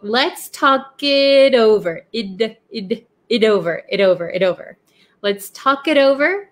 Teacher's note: the T in it becomes a flap T because it is sandwiched in between 2 vowels